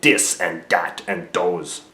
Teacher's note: French accents tend to use harder D sound